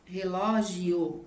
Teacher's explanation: qual que é a mais forte nesse caso relógio é o ló então a gente vai classificá-la como uma proparoxítona certo a quantidade